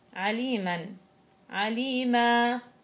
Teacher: أي حرف عليه تنوين نصب بدي أوقف عليه يتولد حال الوقف مد عوض، يعني بعوض، بشيل الفتحتين وبعوضهم بألف مدية 2 حركة. وهنا برضو بقول لك يعتبر من المدود الطبيعية، يعني 2 حركة.